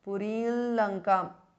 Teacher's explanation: The anuswara changes to the nasal of la.